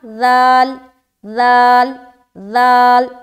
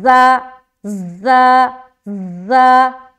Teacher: اس میں زا زا زا، جیسے ادا کرے زا کو پہلے سیٹی والی صفت ظاہر ہو رہی ہے، اس کے بعد حرف ادا ہو رہا ہے